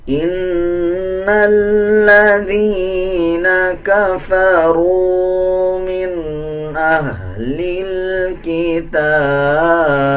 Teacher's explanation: نون کے اوپر شد ہے، غنہ کیا جائے گا اور غننے کی آواز کو ناک سے نکالا جائے گا